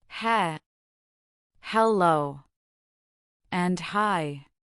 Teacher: Notice how the H is a soft puff of air.